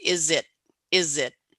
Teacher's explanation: the Z sound in is written with an S, but you hear a Z